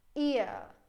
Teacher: this e and this one which is the schwa sound that I know that I have to go from e to the schwa sound and I do it as like one journey